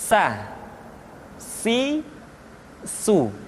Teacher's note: Berikutnya huruf sa, diucapkan sebagaimana kita mengucapkan huruf sa, yaitu ujung lidah di antara dua gigi seri kita